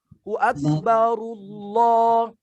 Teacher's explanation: Barnya juga ra-nya ra tebal.